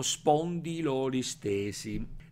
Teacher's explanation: la o finale di spondylus si fonde con la o iniziale di olis thesis